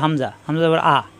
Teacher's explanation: ইন্না এই হামজা কণ্ঠনালীর শুরুতে